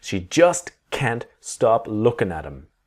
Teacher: the T in can't is always very strong and always there